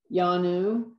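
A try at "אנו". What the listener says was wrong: Anu. Ayin is silent. Hish, me, Anu.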